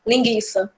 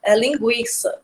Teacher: Não é linguiça, é linguiça. Você escuta o som do U, junto com o I, logicamente.